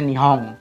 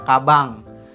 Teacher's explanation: Huruf N ini pengucapannya eng, tapi engnya tipis ya.